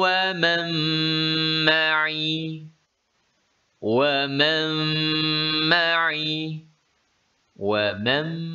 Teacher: Nun dihilangkan bunyi kerana dimasukkan dalam huruf mim. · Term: idgham bi gunnah